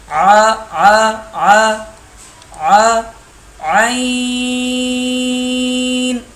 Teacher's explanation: یہ حلق کے درمیان سے ادا ہوگا، حلق کے بیچ سے۔ ع ع ع ع عین، ہا اور عین ایک ہی جگہ سے ادا ہوتے ہیں۔